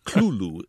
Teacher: It looks as if it should be pronounced Cthulhu, but he maintained in a letter written much later that it's really two syllables, and the first one is sort of coughed or barked out